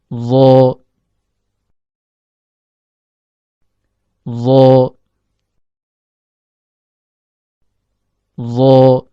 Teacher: Huruf dha keluar dari ujung lidah yang bertemu dengan ujung gigi seri atas.